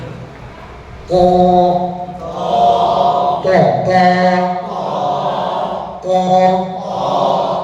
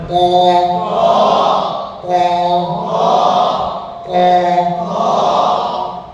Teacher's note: ইস্তিআলা হিসাবে জিহ্বার গোড়া উপরের দিকে উঠবে, হরফটি মোটা হবে।